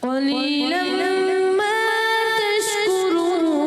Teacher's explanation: क़ाफ को और थोड़ा सा पुर करके अदा कीजिए।